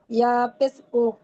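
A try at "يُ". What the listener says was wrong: উ নয়, ইয়া পেশ ইউ। দুইটি অক্ষরে একই উচ্চারণ হবে। ইয়া পেশ ইউ, ইয়া পেশ ইউ।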